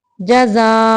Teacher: وقف کی صورت میں تنوین کو الف میں بدل کے منہ کو کھول دیں گے، آ کر دیں گے۔